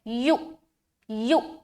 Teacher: हमज़ाए साकिना का हम झटका दे रहे हैं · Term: हमज़ाए साकिना का झटका